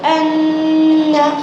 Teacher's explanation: ناک میں تھوڑی دیر آواز کو روکنا غنہ کہلاتا ہے. غنہ کی مقدار 1 الف کے برابر ہے جیسے ان. حمزہ نون زبر ان نون زبر ن ان ان.